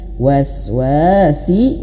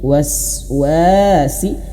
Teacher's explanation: Wnya panjang dua harakat. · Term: mad dua harakat